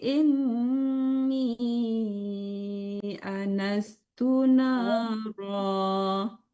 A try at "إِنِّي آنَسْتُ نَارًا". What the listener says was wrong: Anas panjang. Coba ulang lagi dari ininya. Berhenti aja lah. Ada wakaf pola di situ. Inni anastu nara.